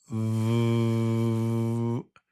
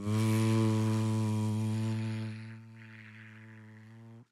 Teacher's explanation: Top teeth gently on bottom lip, and the sound is V, right? It has a buzz here. It's got vibration. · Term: the sound of V